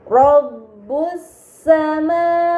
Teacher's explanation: Ini dinamakan alif lam syamsiyah karena hamzah wasl pada alif lam dibaca fathah dan lam pada lam syamsiyah tidak dibaca, namun langsung dibaca huruf setelahnya. Kemudian pada kata wal ardi terdapat alif lam yang bertemu dengan huruf hamzah.